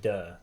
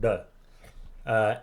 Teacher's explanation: your tongue is curled backwards a little bit like to touch the roof of your mouth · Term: retroflex sound